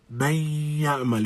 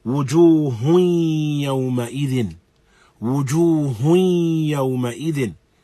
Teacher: this gunna is present up in this nasal, as alongside the articulation from the mouth, we have this sound that is present within the nose. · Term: idghamun bi gunna naqis